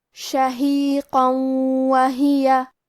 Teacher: واو حروف الادغام بغنہ میں سے ہے، تو ہم یہ تنوین کو واو میں ملا کے غنہ اور تشدید کے ساتھ ادا کریں گے